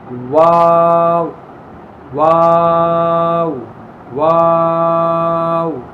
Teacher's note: اس کے بعد واو واو ہونٹوں کو گول کر کے، اس لیے کہ واو ہونٹوں کو گول کر کے واو کو ادا کیا جاتا ہے